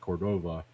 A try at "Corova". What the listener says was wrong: There's no D in it.